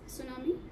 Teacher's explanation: The T is not pronounced.